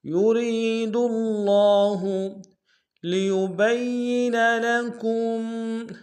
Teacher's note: یرید اللہ میں یا کو ہم سے ادا کریں گے، را کو یا کے ساتھ ملانا، یا مد ایک انداز میں کھینچیں گے، را کو باریک ادا کریں گے کیونکہ اس کے نیچے زیر ہے